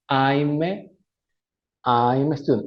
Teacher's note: Es como pegar una consonante, que en este caso es la M, con la vocal A. Pero la A, curiosamente, se pronuncia como una E, pero una E suave